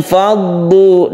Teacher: Nimfaddu ini sukun nun bertemu dengan fa, ikhfa ya kita panjangkan.